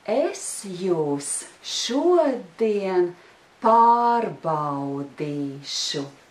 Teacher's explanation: did you notice that the word use is not stressed